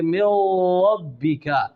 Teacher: बल्कि इस तकरार हकीकी से बचना चाहिए, बिल्कुल एक राशा यानी लर्ज़ा हो, अगरचे इस पर तशदीद भी हो, جیسے میں نے آپ کو بتایا کہ مِن ربک، اب را پر تشدید ہے، اس کو مِن ربک نہیں کہنا بلکہ مِن ربک، یہ تکرار تخفیفی ہے، یعنی زبان میں ایک رعشہ یعنی لرزہ طاری ہوتا ہے